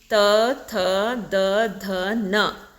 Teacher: ನಾಲಿಗೆ ಹಲ್ಲುಗಳನ್ನು ಸ್ಪರ್ಶಿಸುತ್ತದೆ ದಂತ್ಯ ಅಂದ್ರೆ ಏನು ಹಲ್ಲು ಅಂತ ಸೋ ಹಲ್ಲಿನ ಸಹಾಯದಿಂದ ಉಚ್ಚಾರ ಮಾಡ್ತಕ್ಕಂತದ್ದು ನಾಲಿಗೆ ಹೋಗಿ ಹಲ್ಲಿಗೆ ಸ್ಪರ್ಶ ಆಗುತ್ತೆ ನೀವು